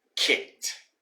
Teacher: the e disappears and the d sounds like a t.